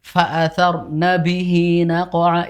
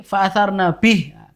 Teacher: Itu kan kenapa dibaca hi panjang? Itu karena kita lanjut. Ketika kita berhenti fa'atharna bih, kan haknya Jadi pendek. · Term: mat silah qasiroh